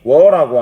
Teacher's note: 2개의 모음이 워라고 하는 하나의 이중 모음으로 줄어듭니다. 해서 이 이중 모음을 분석하면은 W라는 반모음과 R라는 단모음이 결합한 형태가 돼요.